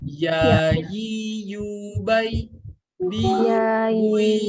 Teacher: Makhrajnya tengah lidah kita nempel ke tengah langit-langit atas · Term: huruf ya